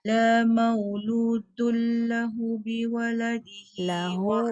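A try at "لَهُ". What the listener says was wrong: Lahu panjang. Lahu 2 harakat.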